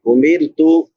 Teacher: را باریک ہوگی کیونکہ را ساکن ما قبل کسرہ یعنی زیر ہے